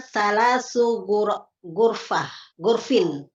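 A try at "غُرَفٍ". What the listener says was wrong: bukan, roknya Pak. Roknya berharokat Bu. Gurofin.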